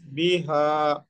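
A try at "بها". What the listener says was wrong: না, হাতে আরো টানেন।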